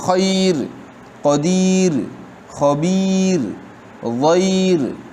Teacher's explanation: را ساکن، اس سے پہلے یا ساکن آ گئی تو یہ را ترقیق سے پڑھی جائے گی